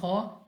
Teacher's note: खौ हमारे पास मुस्तालिया में से मोटा पढ़ेंगे